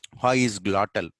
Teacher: Okay, actually there is no tongue is resting position. There is no tongue, there is no movement of tongue.